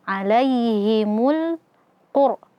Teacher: Rnya sukun sebelumnya ee dommah maka rnya kita baca tebal.